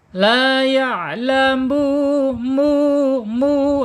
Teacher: Kemudian huruf lamnya sudah ya, secara makhraj ada di al-lisan yaitu ujung lidah menyentuh langit-langit yang depan berdekatan dengan pangkal gigi seri. Kemudian secara sifat juga ada di tawasud, kemudian ada di al-idlaq huruf mudah, dan al-inhirab itu condong ya, lidahnya condong kiri atau kanan ketika sukun ya.